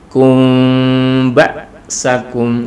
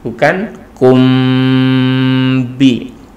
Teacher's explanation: Jadi mim sukunnya terkatupnya bibir kita itu tidak sampai rapat, tetapi ada sedikit furjah ataupun sedikit rongga. Ini untuk bacaan ikhfa syafawi ya, jadi disamarkan.